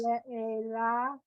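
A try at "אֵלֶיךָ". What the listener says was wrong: Not la, three dots in a triangle. A, le, cha.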